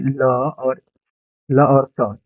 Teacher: जी दंत होता है। दंत से ल बोला जाता है